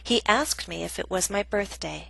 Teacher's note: Example B is a reported question, a statement, so we have falling intonation, which means our voice goes down.